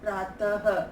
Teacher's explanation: विसर्ग का उच्चारण अह के रूप में होता है, अर्थात अह अ प्लस ह